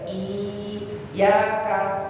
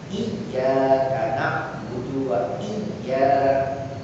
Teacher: Lalu diidghamkan ya sukun bertemu ya menjadi iya. Boten iyaka, boten iyaka, tapi iya niku tasdid.